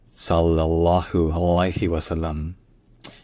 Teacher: le premier son c'est un S emphatique · tous les L sont doublés. C'est-à-dire que, chaque fois que vous entendez le son de le, essayez de prononcer plus long. Je dis bien uniquement dans cette formule-là, pas en arabe en général.